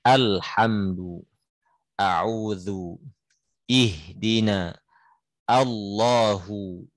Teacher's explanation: Hamzah sama sekali nggak boleh ditafkhim